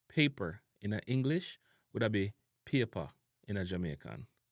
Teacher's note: the short A sound also replaced the short ER, OR, IR, AR, and UR sounds